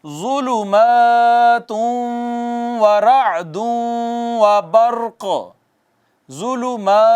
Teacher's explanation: ضا کو پہلے تو ہم نے موٹا پڑھا، حروف تفخیم میں سے ہے، مستعلیہ میں سے ہے